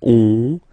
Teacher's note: you get this nasal on, really in your nose